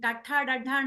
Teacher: మూర్ధన్య స్థానం నుంచి అంటే పైకి తగులుతుంది టడన అనేసరికి మీరు చూస్తే పలుకుతూ ఉంటే పైకి తగులుతుంది